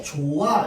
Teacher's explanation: 히읗이 넘어가야 되는데 지금 발음이 안 되고 탈락되잖아. 이건 히읗 탈락이잖아.